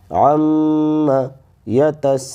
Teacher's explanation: پر جو ہے بڑی مد بھی آ گئی ہے، اس لیے سین کو کم از کم ہم 4 زبر کے برابر کھینچیں گے